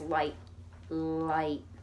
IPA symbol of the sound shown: l